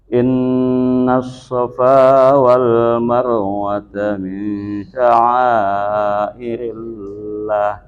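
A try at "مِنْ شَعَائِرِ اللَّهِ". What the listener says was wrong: Lahnya panjangin aja Pak. Min sya'airillah.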